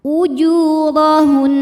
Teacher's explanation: Ra dibunyikan secara tafkhim karena berbaris di atas, maka dibaca tebal